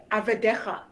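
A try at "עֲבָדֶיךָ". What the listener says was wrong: And just fully close the syllable av decha.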